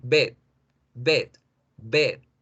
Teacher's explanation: Si yo no alargo la vocal, yo voy a decir bed, bed, bed, y eso es cama.